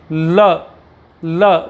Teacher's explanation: तो जो आपकी हवा है वो सामने से ना निकलकर दोनों साइडों से अलग अलग करके निकलती है। · अब आप ल का उच्चारण कीजिए तो आपको पता लगेगा, आपकी जीभ ऊपर टच हो जाती है तो आपकी जो हवा है वो गालों के पास से निकलती है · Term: पार्श्विक व्यंजन